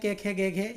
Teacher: क वर्ग का कंठ से होता है, क, ख, ग, घ, ये आपके कंठ से बोले जाते हैं